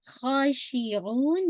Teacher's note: खा हैवी भी रहेगा, स्ट्रेच टू काउंट